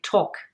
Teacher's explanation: On retrouve le verbe to talk, avec ici, attention, le L muet. On ne va pas dire talk ou talkative, mais talk.